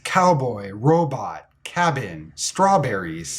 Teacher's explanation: the B sound is a stop voiced consonant